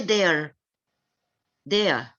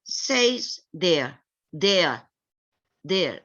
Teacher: Please forget the R sound at the end.